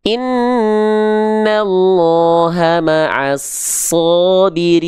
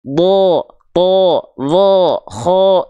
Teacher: Kalau dia hurufnya karakternya tebal, nah huruf yang karakternya tebal itu, ketika huruf tebal atau karakter tebal ini dibaca berharokat fathah, bunyi vokalnya bukan condong pada vokal A, tapi akan terdengar condong pada vokal seperti O.